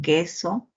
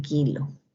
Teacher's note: Luego tenemos el oclusivo velar sordo